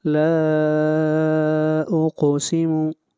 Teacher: لا کے اوپر مد منفصل ہے، اس مد کو 3 الف کے برابر کھینچ کر پڑھیں گے